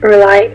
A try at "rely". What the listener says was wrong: Yeah, of course, rely, not really. Because really it doesn't sound English at all.